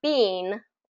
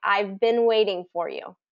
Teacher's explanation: it's not that e sound it's the short I